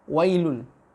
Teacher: Ketika ya sukun didahului oleh fathah, itu condongnya lebih banyak ke iya-nya, ke i, ya, bukan ke e. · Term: harful lin